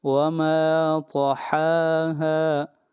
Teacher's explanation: وما کو 1 الف کے برابر کھینچ کر پڑھیں گے